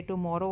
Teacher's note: ये आयम्बिक है, first unstress है ना, देन स्ट्रेस है